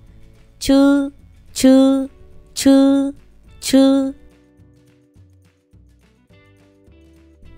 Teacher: Để phát âm dễ thì môi cũng hơi cong lên một tí, chư, chư. CH phát âm giống ZH nhưng bật hơi mạnh hơn